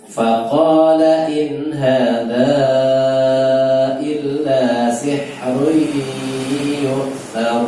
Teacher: Ya, hati-hati di sihri itu sih pakai hak ya. Kemudian run tanwin ketemu dengan ya itu idgham bi ghunnah